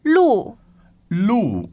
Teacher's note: lo means street a road or road now that is the fourth tone